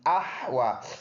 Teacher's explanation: ہا گلے سے صاف ادا کریں گے، واو پر کڑی زبر ہے، ایک الف کے اندازے سے لمبا کریں گے، یا پر کچھ نہیں ہے، نہیں پڑھیں گے.